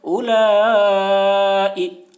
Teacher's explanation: اولا، اوپر مد، اولا، حمزہ زیر ای، حرف مد کے بعد حمزہ اسی کلمہ میں ہے، اس لیے مد متصل ہوا، مد متصل کو 3 یا 4 الف کے برابر کھینچ کر پڑھیں گے۔ اولائی، حمزہ کے نیچے زیر ہے، زیر کو جلدی پڑھیں، تھوڑا بھی نہ کھینچیں، معروف پڑھیں، مجھول آواز سے بچیں۔